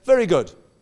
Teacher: she's got it right but the problem about very good is the moment you say very good you shut the door because you normally say it with a falling intonation